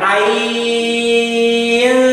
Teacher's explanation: Ain 6 harokat, kemudian nun sukun bertemu sin harus didengungkan namanya ifa. Ain dengung setelah panjang.